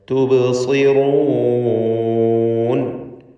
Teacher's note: സ്വാദിന് കസ്റായതുകൊണ്ട് കുറഞ്ഞ തഫ്ഖീമാണ് വരിക. റാഉം തഫ്ഖീം ചെയ്ത് ഉച്ചരിക്കുക.